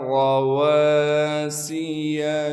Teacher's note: واو کے بعد الف مدہ موجود ہونے کی وجہ سے واو کو 1 الف کے مقدار کھینچیں گے، سین میں سیٹی ادا کر کے پڑھیں گے۔ یا کو بغیر کھینچے پڑھنا ہے کیونکہ یہ یا مدہ نہیں ہے بلکہ یا متحرک ہے، یعنی اس پر صرف زبر موجود ہے۔